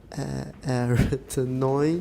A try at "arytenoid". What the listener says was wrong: Stress is on the second syllable. Everyone, arytenoid. Arytenoid.